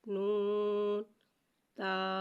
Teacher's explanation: نون کو ایک الف 3 مقدار کھینچ کے پڑھیں گے۔